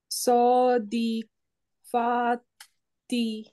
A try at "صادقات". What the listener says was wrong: না এটা কফ।